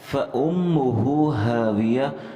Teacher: فَأُمُّ کے اندر ہم نے حمزہ پڑھنا ہے, حمزے کو میم کے ساتھ لگانا ہے, میم مشدد پر ہم نے غنہ کرنا ہے, اور میم کے بعد ہا کو ہم نے ایک واو کی مقدار لمبا کرنا ہے